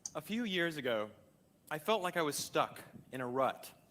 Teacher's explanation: So the TED Talk speaker over here on the left uses more pitch accents, and this speaker actually uses a lot of the very high rising pitch accents, which sound very prominent to an English listener